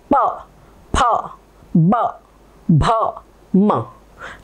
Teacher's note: प फ, हर एक में ओठ हमारे एक दूसरे को टकराएंगे। प, फ, ब, भ, म। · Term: प वर्ग